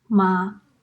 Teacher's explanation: The first tone is an even tone. The pitch of your voice does not change. It's a lot like what in English, as in ma.